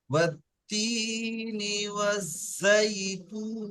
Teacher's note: والتين والتين والزيتون والزيتون দেখেন এখানে নুনসের নি, এটা টানবেন না। এখানে টান আছে দু জায়গায়, একটা আছে ওয়াত্তি, তিতে টান আছে, একটা জাইতুন